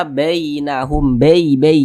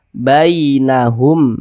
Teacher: baca fathah maka berarti huruf ya sukunnya itu menjadi huruf Lin huruf Lin pada huruf Ya Sukun berhati-hati jangan sampai condong ke E ketika mengucapkannya